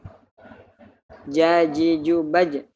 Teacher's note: makhrajnya huruf jim adalah bagian tengah lidah dengan langit-langit di atasnya.